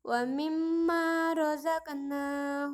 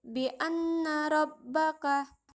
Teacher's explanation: dan Nun tasydid hukum mim dan Nun tasydid juga disebut sebagai wajibul ghunnah yang bermakna bahwa pembaca wajib untuk mendengungkan bacaan